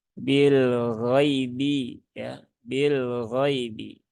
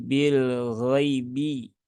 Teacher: Di sini ada huruf lin, ya sukun setelah fathah, maka ini dibaca dengan halus, ya. Jangan disentak, jangan dipaksa, dan ya sukun itu vokalnya adalah bunyi i. Jadi bil ghaibi, bukan bil ghaibi, ya.